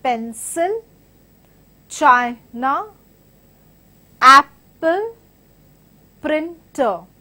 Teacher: So you're stressing on the first part of the word.